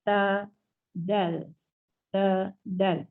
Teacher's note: Hujung lidah menyentuh menyentuh pangkal gigi depan.